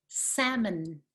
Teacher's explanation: we do not pronounce the l and the second vowel is the weak vowel schwa salmon and you can see the stresses on the first syllable · and you can see the stress is on the first syllable